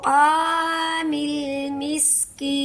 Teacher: ये वाले जो मद्दे आरज होती है इसे मद्दे आरज लिस्सकून कहते हैं। इसे हमने वक्फ की सूरत में 3 फिंगर काउंट करना है